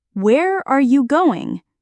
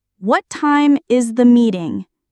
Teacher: Wh questions with falling intonation. Your voice goes down at the end.